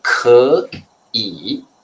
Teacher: The change will be the third tone to the second. So I should pronounce 可, the second tone.